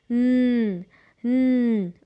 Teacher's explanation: sound of the base word is n n okay so now when you sound this n you can feel the vibration in your throat right and just because you feel the vibration it is voiced